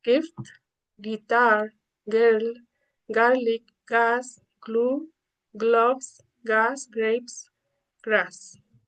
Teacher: This phoneme is a consonant. This is plosive stop. And the place of articulation is velar. This is voiced. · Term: G sound